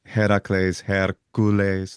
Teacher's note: But what happens is then that name gets into southern Italy, and that most likely, and then gets taken into an early form of Latin. There's a syncopation of the a, so we get Heracles, Hercules, with a little prosthetic vowel in there.